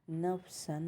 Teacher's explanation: یہاں پر نون کو ظاہر کریں گے کیونکہ تنوین کے بعد حمزہ آیا ہے تو یہاں پر اظہار ہوگا